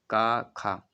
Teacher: आवाज कहां से आप देखेंगे कंठ से आती है · देखिए इनमें से जो हमारी कंठ ध्वनियाँ कहला जाती हैं, का और खा, जब आप का और खा बोले तो आवाज़ कहाँ से आप देखेंगे, कंठ से आती, सीधा प्रेशर कंठ पर पड़ता है